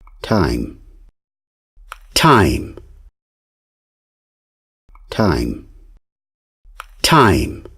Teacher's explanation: I am going to pronounce the word time, making the T sound at the beginning non-plosive, and then after that plosive.